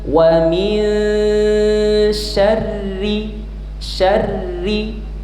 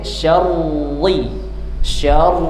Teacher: Jadi cara bacanya min wamin syarri syarri tidak boleh syar syar tebal masuk syar tebal syarri tidak boleh wamin syarri ujung lidahnya menyentuh gusi atas pangkal lidahnya diturunkan jadi tidak ada efek ketebalan pada hurufnya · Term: tarqik